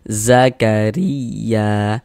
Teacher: Harokat kasroh atau tanda baca kasroh atau baris kasroh namanya nih. Maka huruf ro ini kita baca tarkik, kita baca tipis.